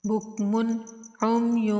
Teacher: میم کے بعد عین چونکہ حروف ہلکی ہے تو یہاں پر غنہ نہیں کریں گے، بغیر غنہ کے اظہار کر کے پڑھیں گے